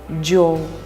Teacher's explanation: обозначает звук, близкий к слитному, смягченному звуку «дж», как, например, в словах «джана» – сочинительный союз «и», «джоу» – дорога.